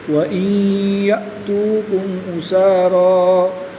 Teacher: نون سکن کے بعد حروف معلوم میں سے یا رہا ہے تو یہاں پر ادغام مال غنہ ہوگا یعنی غنہ کر کے پڑھیں گے. حمزہ ساکنہ کو ہمیشہ جھٹکا دے کر پڑھتے ہیں.